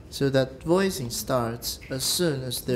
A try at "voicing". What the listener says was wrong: Voicing 不用那么高.